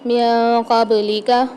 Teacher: با کے اندر قلقلہ کرنا ہے، ڈبل آواز نکلے گی۔